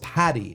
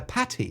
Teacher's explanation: in the American pronunciation of T's, especially double T's, we pronounce them like D's.